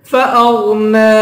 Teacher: فأغنى غین کو پر پڑھیں گے نون کے اوپر کھڑا زبر ہے اس کو 1 الف کی مقدار کھینچ کے پڑھیں گے